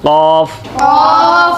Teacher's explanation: ज़बान का दरमियान वाला हिस्सा, तालु का सख्त हिस्सा, वहाँ से काफ